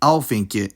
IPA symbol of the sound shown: ɲ